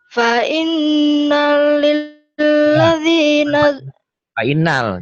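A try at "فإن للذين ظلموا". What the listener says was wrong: jangan hati-hati. Fa inna lil, jangan fa innal. Kalau fa inna lil, hayo.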